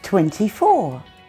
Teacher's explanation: If I'm speaking very carefully, I'll pronounce that middle T sound. But normally, I drop it.